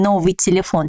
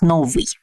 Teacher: the accent falls not on the ending, and it had a hard consonant before the ending. Новый.